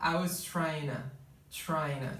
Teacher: Então é o seguinte, a palavra to, por exemplo, ela vai ser reduzida, no inglês americano é muito comum que a palavra to seja reduzida a um na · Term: connected speech